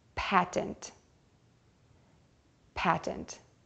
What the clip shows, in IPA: pætɪnt